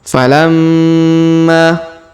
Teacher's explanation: Huruf ma berharokat tasdid, maka kita dengungkan dan kita tahannya 2-3 harokat